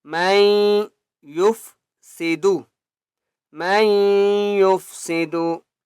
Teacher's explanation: میم کو یا کے ساتھ ملائیں گے اور غنہ کریں گے